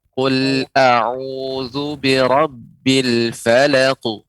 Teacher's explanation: terkhusus qalqalah dengan qaf ini lebih tebal. Qaf, ta, ya, karena dia huruf isti'la.